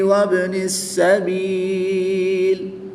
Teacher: نون ساکن کے بعد حرف با ہے تو یہاں پر اقلاب ہوگا، نون ساکن کو میم سے بدل کر غنہ زمانی کر کے پڑھیں گے